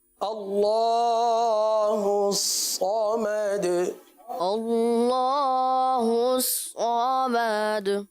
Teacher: اللہ عز و جل کے لام کو پر پڑھیں گے